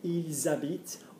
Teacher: when you have a verb which starts with an open mouth, vowel. You're going to hear the S.